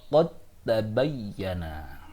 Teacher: sukun dal dari qad di-idgham-kan menjadi huruf ta